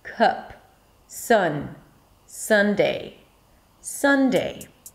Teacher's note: Sunday, you start with an S, and then it's a cup sound, cup. A cup is a stressed schwa, so you really don't need to do anything to make the sound, just push the voice out and don't open your mouth so much for it.